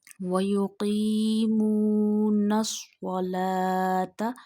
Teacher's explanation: Read Swad with a thick voice because this is also a Mustaliya letter.